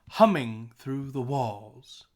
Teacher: we want to highlight humming and walls we don't care about through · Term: stress syllable